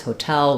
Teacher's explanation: I mean, you'll still be understood if I say hotel, where's the hotel? But the rhythm of that word is hotel with second syllable stress.